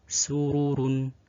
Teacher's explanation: ra yang dhammah juga dibaca tafkhim